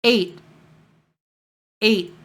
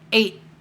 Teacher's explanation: So it's A and then a T sound, a T stop.